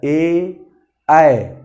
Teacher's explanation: ए कंठ से आवाज़ तो निकल रहा है, लेकिन उस आवाज़ को तालु और जीभ के पिछले वाले सिरे से भी बाधित किया जा रहा है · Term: कंठ तालव्य